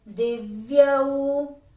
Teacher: di is short, va is half. Yau is long.